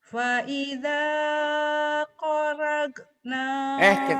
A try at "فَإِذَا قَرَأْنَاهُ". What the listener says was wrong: Kenapa jadi korok nak? Korok, neken, korok biasa aja, korok. فإذا قرأناه فاتبع قرآنه.